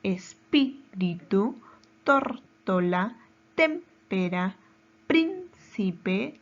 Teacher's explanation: nos damos cuenta al momento de separar en sílabas esta palabra tiene su mayor fuerza de voz en la antepenúltima sílaba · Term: esdrújula